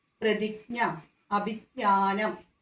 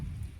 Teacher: ജ്ഞ എന്നാണ് വരിക. ഞാ എന്ന അനുനാസികമായിരിക്കണം ലാസ്റ്റ്, അതിൻ്റെ ഉച്ചാരണമായിരിക്കണം